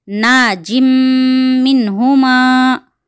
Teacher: और नून साकिना भी है, यहाँ पे नून साकिना के बाद हुर्फ हल्की में से ह आया हुआ है, तो यहाँ पर इजहार का क़ायदा अप्लाई होगा, इसलिए यहाँ मिनहुमा के पास गुन्ना नहीं होगा। नून साकिना को यहाँ पर ज़ाहिर करके अदा करना है। इस जुमले में पहले इदगाम का क़ायदा आया है, उसके बाद इजहार का क़ायदा आया है। · यहाँ पे जीम तनवीन है, उसके बाद मीम आया हुआ है, इसलिए यहाँ पर इदगाम मा गुन्ना होगा